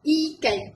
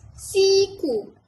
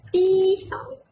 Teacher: Kalau vokal ni, bunyi dia adalah bunyi-bunyi yang bersuara. Jadi waktu tu, kita sebut I tu, pita suara bergetar. Glotis kita ni bergetar. Dan bibir kita, apa yang kita nampak di luar ni, dia akan terhampar.